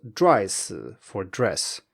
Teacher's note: we have the initial zh in Mandarin standing in for the consonant cluster dr in English. This consonant cluster is very hard to pronounce for most native speakers of Mandarin because we don't have consonant clusters in Mandarin.